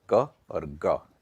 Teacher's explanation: अल्प प्राण मींस जिसमें थोड़ी सी हवा निकलती है यानी थोड़ी सी देर के लिए जो एयर है वो फ्लो